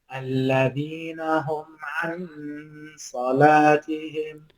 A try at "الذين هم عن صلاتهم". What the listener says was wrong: So try not to pronounce the noon so clearly. That sounded more clear than what it should. remember the noon, we're going to pull back a little bit and we're going to mute it slightly. My tongue is barely touching my palate.